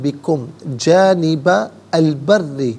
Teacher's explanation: جانبہ میں با پر زبر ہے، اسے البری کے لام ساکن کے ساتھ ملائیں گے، درمیان میں سے الف یعنی حمزہ کو حذف کریں گے. بری میں را کے نیچے زیر ہے، را کو باریک کر کے پڑھا جائے گا، اور را مشدد ہے، اسے جماؤ کے ساتھ ادا کیا جائے گا.